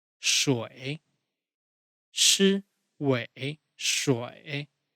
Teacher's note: Keep your tongue retroflex when pronouncing.